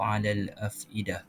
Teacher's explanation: huruf qamariyah ni adalah huruf yang dibaca secara jelas, namun tetap memperjelaskan pembacaan pada huruf lam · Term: alif lam qamariyah